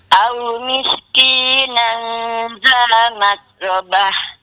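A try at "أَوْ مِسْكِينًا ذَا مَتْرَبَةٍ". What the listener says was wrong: Kontrol sikit angin tu, jangan bagi banyak.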